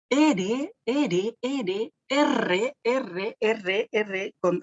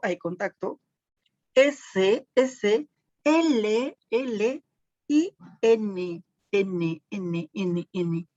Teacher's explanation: Los linguos alveolares, aquí en este caso, el ápice de la lengua, pues, va a contactar con los alvéolos de los incisivos superiores cuando decimos R, hay contacto, S, L, y N. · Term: linguoalveolar